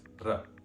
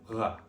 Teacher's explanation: Between slender vowels, r is pronounced r, and between broad vowels, it's a uvular, r, like in French.